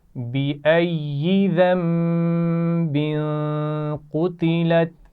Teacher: یا پیچھے سے ملے گی بھی اور اس کی اپنی آواز بھی آئے گی کیونکہ شد ہے اس پر